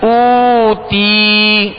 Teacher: حمزہ واو پیش او، تا یا زیر تی، اوتی، اوتی. جب او پڑھیں گے ہونٹوں کو گول کریں گے، اور تی جب پڑھیں گے تو آواز کو گرا دیں گے